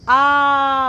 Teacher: जब आ बोलते हो तो मुंह जो है वो पूरा खुलता है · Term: विवृत स्वर